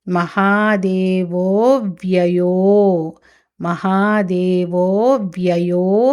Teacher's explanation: అక్కడ మహాదేవో అవ్యయః అని పలకూడదు కలిపి మహాదేవో వ్యయో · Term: సంధి